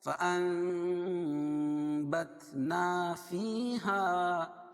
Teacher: نون ساکن کے بعد با آئے تو نون کو میم سے بدل کر غنہ اور اخفاء کے ساتھ پڑھنے کو اقلاب کہتے ہیں